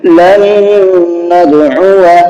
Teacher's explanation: نون پر تشدید ہے، اس لیے نون میں غنہ ہوگا۔ اور دوسرا قاعدہ آپ کا یہ ہے کہ واو کے بعد میں الف ہے، اس کے اوپر گول نشان بنا ہوا ہے، یہ الف نہیں پڑھا جائے گا۔